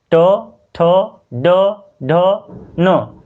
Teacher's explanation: जैसे पढ़िए ट, ठ, ड, ढ, न, तो जब भी पढ़िएगा तो ये तालू और दांत के बीच यानी कि मसूड़ा पे जाके टच करेगा · मूर्धा यानी कि जीभ मसूड़ा को टच करता है, ना तालू को टच करता है और ना दांत को टच करता है, उसके बीच वाले भाग को जाकर के उच्चारण में टच करेगा, तो वो होगा मूर्धा, और उसको बोलते हैं मूर्धन्य वर्ण।